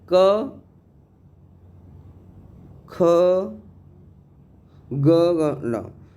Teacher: काता मुर्गा दांत से, मतलब का मतलब कंठ से, का वर्ग वाले हैं वो किससे बोले जाएंगे, कंठ से